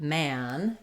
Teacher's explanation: my lower part of my tongue is down in the front and the back of my tongue is lifted in the back my jaw is more open than it is for men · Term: the a vowel